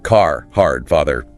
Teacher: a key one is rhoticity. Like Canadian, the R sound is nearly always pronounced.